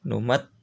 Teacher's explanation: Nah, mat ini harus ditahan karena ada tasydid.